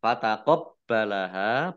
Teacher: baknya dibaca double, ada tasdidnya. Hak fathah alif, mat tobi'i, panjang 2 harokat.